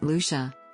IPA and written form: ˈluːʃə (Lucia)